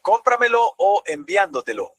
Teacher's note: el acento va todavía más atrás, antes de la antepenúltima sílaba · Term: sobreesdrújulas